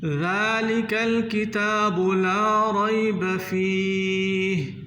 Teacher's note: ذال کو نرمی سے ادا کرنا ہے۔ ذال اور زا اس میں فرق کرنا ہے۔ ذال کو سیٹی سے ادا نہیں کرنا۔